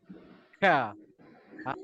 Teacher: Pangkal lidah dinaikkan ke langit keras. Ka. Dia bukan kat depan, dekat belakang tu makhraj dia. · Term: huruf ka